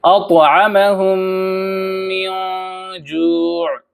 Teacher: ادغام کا مطلب یہ ہے کہ میم ساکن کو ہم اگلے میم سے ملا دیں گے، میم ساکن کو ہم میم مشدد سے ملا دیں گے